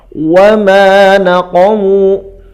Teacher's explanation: wa ma panjang 2 harakat, naqamu pendek, mu-nya dibaca 2 harokat